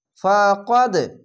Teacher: কলকলা ধাক্কা মেরে নিচে সাউন্ড আসবে